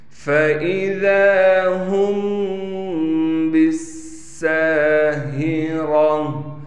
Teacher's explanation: فَإِذَا هُمْ بِالسَّاهِرَةِ، فا کے بعد حمزہ ہونے کی وجہ سے صاف کر کے نکالیں گے حمزہ کو، فا کو بالکل نہیں کھینچیں گے، دال کو 1 الف کی مقدار کھینچا جائے گا، میم پر اخفا یعنی غنہ کیا جائے گا، اس با کو سین سے ملا دیں گے، سین پر تشدید ہونے کی وجہ سے تھوڑا ٹھہراؤ بھی کریں گے، سین کے بعد الف ہونے کی وجہ سے سین کو 1 الف کی مقدار کھینچیں گے، ہا کو صاف کر کے گلے سے سینے کی جانب جو گلے کی طرف ہے وہاں سے ہا کو نکالیں گے، را کو پر کر کے پڑھیں گے۔